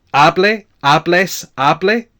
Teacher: So we have the stress on the second last syllable